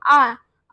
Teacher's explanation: इसमें क्या होता है जो आ जब आप बोलोगे ना तो आपकी जो आवाज है व पीछे की तरफ से आ रही है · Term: पश्च स्वर